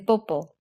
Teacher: The three P sounds, lax B as in 비행기, which is very slightly aspirated, aspirated P as in 팔, which is much more aspirated, and tense B as in 뽀뽀, which is unvoiced, unaspirated, and comes out with a lot of lip and throat tension, which usually makes the vowel afterwards higher pitched. 뽀뽀. And then we had three T sounds.